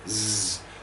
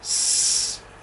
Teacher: The only difference that we can hear there is vocal cord action. Z has vocal cords vibrating, s is otherwise identical, but doesn't have the vocal cords vibrating.